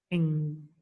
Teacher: Ing is a voiced velar nasal consonant sound. · Because it is not an oral sound. The air that comes from the lungs is released through the nasal passage.